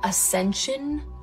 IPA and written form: əˈsɛn ʃən (ASCENSION)